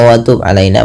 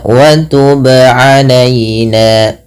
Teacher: ba qalqalah, wajib memantul, tidak hanya sekedar watub alaina.